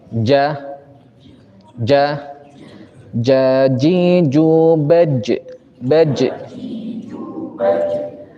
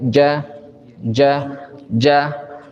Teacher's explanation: Pas kita taruh lisan kita, tidak ada napas yang keluar, tidak ada angin yang keluar. Siapa yang ngucapin ja masih ada napasnya, maka keliru. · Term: huruf jim